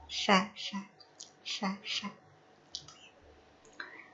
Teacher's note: yang betul, yang fasih itu adalah ketika ujung lidahnya bukan nempel ke gusi, tetapi ke ujung gigi seri atas